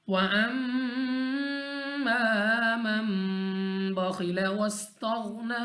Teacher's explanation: अब यहाँ पे हमारे पास रूल्स की बात करें तो यहाँ पे हमारे पास मीम मुशद्दद, और मीम मुशद्दद के साथ हमारे पास अलिफ मद्दा, तो गुन्ना करेंगे और खींच के भी पढ़ेंगे। नून साकिन के बाद हमारे पास बा आ गया, तो यहाँ पे इक़लाब का कायदा है, हमने यहाँ पे भी गुन्ना करके पढ़ना है।